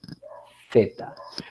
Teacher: son sonidos en las cuales hay una hay un rozamiento ya hay un rozamiento en la salida y no hay una obstrucción total en la salida del aire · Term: fricativas